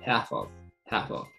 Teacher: はじゃなくて、へじゃなくて、その間の音 、half▁of。half▁of。になります。次、V▁の音と▁U▁がくっついて、V▁と▁A▁がくっついて、だになります。give▁up。give▁up。これは和